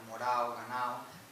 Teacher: la desaparición de las oclusivas sonoras, D, G, B